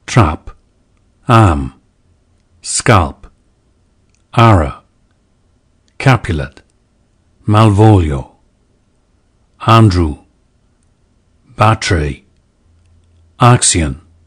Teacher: a more open front vowel than today's a, similar to the a vowel we hear in the dialects of Northern England. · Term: trap lexical set